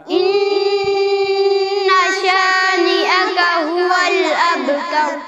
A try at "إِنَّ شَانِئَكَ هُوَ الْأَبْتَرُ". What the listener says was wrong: إن کو لمبا نہیں کریں گے نا، اس میں الف نہیں ہے، اس میں غنہ کریں گے صرف،